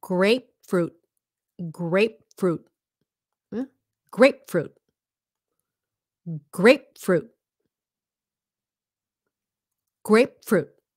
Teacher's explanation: first of all okay grape um grape it's a stopped p grape and then fruit stop T at the end